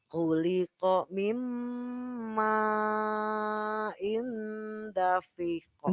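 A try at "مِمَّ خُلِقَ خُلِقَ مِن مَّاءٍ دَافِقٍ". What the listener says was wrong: Danya panjang.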